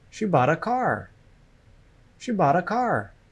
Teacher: The stress is on the content words, bought and car.